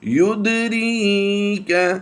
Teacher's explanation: وما يدريك، دال حروف کلکلا سے ہے، یہاں پر ہم نے کلکلا کر کے پڑھنا ہے، یعنی آواز کو کچھ جنبش دے کر پڑھنا ہے۔